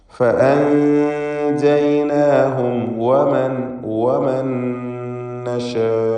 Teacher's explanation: സാക്കിനത്തായ നൂനും ശേഷം ഹറക്കത്തുള്ള നൂൻ രണ്ടും ചേർത്ത് ഉച്ചരിക്കുക. സാക്കിനത്തായ നൂനിനെ ഇദ്ഗാം ബിഗുന്ന കാമിൽ നൽകി നൂനിലേക്ക് ശേഷമുള്ള നൂനിലേക്ക് പൂർണ്ണമായും ലയിപ്പിച്ച് ശബ്ദുള്ള നൂനിനെ മാത്രം ഉച്ചരിക്കുക. · അന്ത്യത്തിൽ സാക്കിനത്തായ മീം വന്നു. അതിന് ഇൽഹാർ ഷഫവി നൽകി വെളിവാക്കണം. ശേഷം വാവാണ് എന്നതുകൊണ്ട് തന്നെ മീമ് സൂക്ഷ്മതയോടെ ഇൽഹാർ ചെയ്യേണ്ടതാണ്.